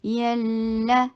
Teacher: یا سافٹ حروف میں سے ہے، جی کی ساؤنڈ نہ آئے۔ یلا، یہ یا جو ہے نا، یہ زبان کے درمیان والے پارٹ سے ادا ہوتا ہے، اوپر تالو کو چھوتا بھی نہیں ہے، بلکہ اتنا سافٹ ہوتا ہے۔